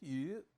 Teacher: this one is first tone rather than fourth tone